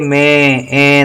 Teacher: में नाक से कुछ आवाज निकल रही है, उसके लिए हमें अनुसार बिंदु लगा देनी पड़ेगी।